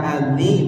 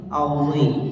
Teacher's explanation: Jadi dha itu harus dibaca tebal, jangan menyebalkan.